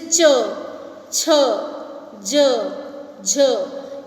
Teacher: जिन व्यंजनों को बोलते समय मुंह के दो अंग मिलने के पश्चात अलग हट जाते हैं वह और हवा घर्षण करती हुई बाहर निकलती है, स्पर्श संघर्षी।